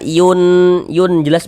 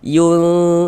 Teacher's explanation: Bunyi nun sukunnya kita baca samar. Jangan dibaca yun jelas begitu, jangan, tapi disamarkan. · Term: ikhfa